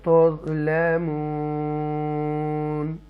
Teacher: تظلمون یہاں پر ہم کیا کریں گے, مد عارض لگائیں گے, کھینچ کے پڑھیں گے